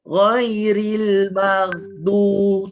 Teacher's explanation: Hujung lidah tolak kat gigi dalam bahagian depan tu. kita telah membunyikan huruf dal.